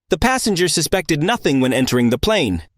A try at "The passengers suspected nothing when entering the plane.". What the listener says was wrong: In this case, plane was pronounced a bit too heavy. The P sound made a too big pop.